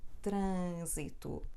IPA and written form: trɐ̃zitu (trânsito)